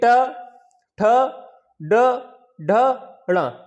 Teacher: तो जब टा का जब उच्चारण करते हैं हम लोग तो जिह्वा की जो नोक है वो ऊपर जाके मूर्धा को स्पर्श करती है, तब टा का उच्चारण होता है। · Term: टा वर्ग